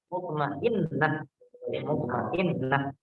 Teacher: Taknya di ujung, tak marbutoh. Kalau dia sukun, dia bunyinya berubah menjadi ha.